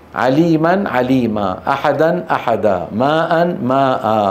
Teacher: تعويض بالف تمد بمقدار حركتين ويلحق بالمد الطبيعي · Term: مد العوض